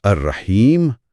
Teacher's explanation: یہاں بھی سب سے عام طریقہ تو اسکان ہی ہے، یعنی الرحیم، لیکن ایک ماہر قاری یہاں اپنی مہارت دکھاتے ہوئے وقف بالروم بھی کر سکتا ہے۔ اچھا، یعنی میم کی زیر کی 1/3 آواز بہت آہستگی سے ادا کرے، الرحیم ہلکی زیر کے ساتھ۔